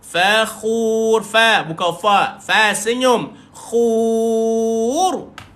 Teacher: Ra dimatikan, dan sifat ra di sini tebal